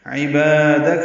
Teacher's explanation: عین وسط حلق سے ادا کریں گے